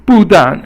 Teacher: 不 但 is fourth tone, both are fourth tone, which is a falling tone